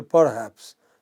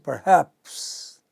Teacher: Per is short, soft, but haps is long, loud, heard clearly.